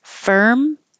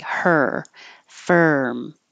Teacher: your jaw is very high and you're just making the ER noise of the r